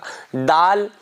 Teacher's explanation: زبان کی نوک اوپر والے دانتوں کی جڑ میں لگائیں. جو زبان کی نوک ہے اسے اوپر والے دانتوں کی جڑ میں لگائیں، جہاں سے تا نکلے گا وہیں سے دال نکلے گا.